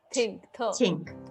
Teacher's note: And oftentimes you'll hear, instead of the unvoiced version for, say, think, you'll hear someone use a T sound